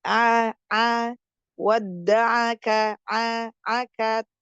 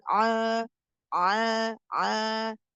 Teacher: Jadi a-nya itu harus jelas ee vokal aa dan ringan dia. A jangan a a ini suaranya masih di dalam.